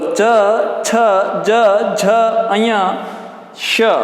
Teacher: तालु, दांत से ऊपर थोड़ा सा जीभ टकरा रही है, इसलिए इनको कहा जाता है तालव्य शकार